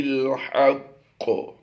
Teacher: قاف مشدد ہے، حروف قلقلہ سے ہے، وقف کی وجہ سے ہم نے یہاں پر قلقلہ کبرا کرنا ہے